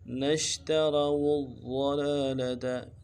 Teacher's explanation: نش میں شین کو واضح کرنا ہے اور واو کو موٹا کرنا ہے، واو کو آگے ضاد کے ساتھ ملانا ہے، تشدید ہے، زور دیں گے اور ضاد کو واضح ادا کریں گے۔